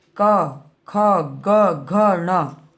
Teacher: फिर कोमल तालव्य, जब जीभ तालु के सबसे पिछले भाग को छूती है